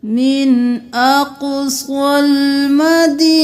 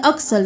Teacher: قاف موٹا بھی ہے، قلقلہ بھی ہے، اقصل نہیں کرنا.